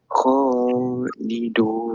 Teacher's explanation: kalau boleh panjangkan ambil empat harakat